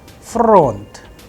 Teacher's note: So, the udarenie or the stress is on O, that is why the sound of O is under stress, and I am pronouncing with higher pitch on O.